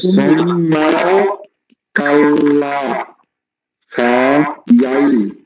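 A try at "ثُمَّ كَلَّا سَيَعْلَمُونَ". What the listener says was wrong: আপনার একটু ভুল হয়েছে, কারণ কি জানেন, আপনারটা আরো সুন্দর হইতো, আপনি এই কি করছেন, টাইনে পড়ার চেষ্টা করছেন, এই জন্য ভেঙে ভেঙে বলেন খুব।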